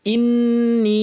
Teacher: নুনের উপর তাশদি লম্বা গুন্না এরপরে একটা ইয়া আছে পরে হামজা আছে এজন্য লম্বা হয়ে যাবে